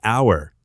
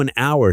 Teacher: Although it starts with the letter H, the H is silent. So an hour sounds almost like anor.